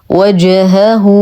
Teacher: نتم ضمه الهاء ونصها بواو مديه بمقدار حركتين صله صغرى